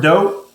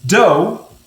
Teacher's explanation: And I've underlined the last two letters in dough because when we say that word dough, I hear the D, I hear the OU making that O sound, it's called a diphthong, but I don't hear the GH. I don't hear that final consonant blend, is what it's called.